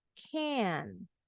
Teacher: T-nya nggak kedengeran, nggak perlu dibunyiin can't. Nggak perlu dibunyiin kayak gitu.